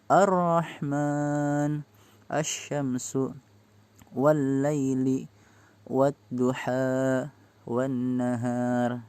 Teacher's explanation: Alif lamnya itu nggak usah dibaca, langsung masuk ke huruf setelah alif lam. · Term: alif lam asy-syamsiyah